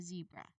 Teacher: you can start with a strong continuous buzzing sound. So, you make the sound last a moment. · You must turn on your, voice to create the buzzing vibration.